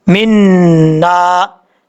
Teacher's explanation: ये देखें जी, मीम ज़ेर नून, मिन, नून ज़बर अलिफ ना, मिन्ना। नून के ऊपर शद है, गुन्ना करेंगे एक अलिफ की मकदार, आगे अलिफ है, अलिफ जो है एक अलिफ की मकदार लंबा करके पढ़ेंगे।